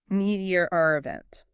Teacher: The R intrusion is very common, especially in non-rodic accents like standard British English. It happens after vowels like schwa or poles.